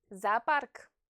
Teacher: the two O's are unstressed and they precede the stressed syllable. Therefore, they're pronounced A.